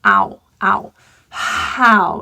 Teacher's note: How is an aspirated H, meaning blowing your air out. We don't delete this H.